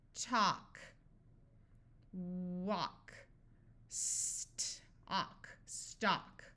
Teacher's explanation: So here we have A-L and then a K. So this A will have the broad sound of ah, but the L will be silent.